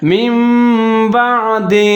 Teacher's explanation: اقلاب کا کیا مطلب ہے؟ یعنی کہ نون یا تنوین جو بھی آئے ان دونوں کو میم کی آواز کے ساتھ ہم تبدیل کر دیں گے